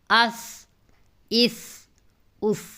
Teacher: سا کو سین کی آواز سے الگ پڑھنا ہے، ٹھیک ہے، سین سیٹی والی آواز کے ساتھ پڑھا جاتا ہے، اس میں ایسی آواز آتی ہے، اس میں جو ہے اس کو نرمی سے ادا کرنا ہے، سانس جاری رہے لیکن یہ ہے کہ سیٹی والی آواز نہ آئے۔